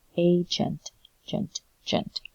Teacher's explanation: So A is emphasized. That means the E in gent is the unstressed vowel.